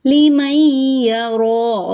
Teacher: کیونکہ نون ساکن کے بعد یا ہے، یہاں پہ ادغام علی غنہ ہو رہا ہے